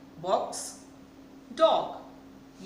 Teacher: हम ओ को बहुत जल्दी बोल रहे हैं, बहुत हम लंबा खींच कर नहीं बोल रहे हैं, इसलिए ये वॉवल शॉर्ट वॉवल है।